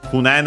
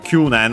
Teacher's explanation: Kunen unaccented, Kyunen accent on the Q.